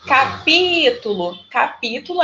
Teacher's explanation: É o pi, que é a sílaba mais forte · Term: sílaba tônica